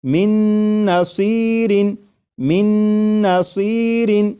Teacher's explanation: میم کے بعد نون مشدد جو ہے اس کی آواز آئے گی اور غنہ کے ساتھ پڑھیں گے۔